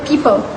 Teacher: in quicker or more emotional speech, the second syllable may become less distinct, often reducing to P.